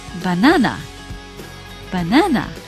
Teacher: the apostrophe is in front of the second syllable, na. This is showing that the stress is on this syllable.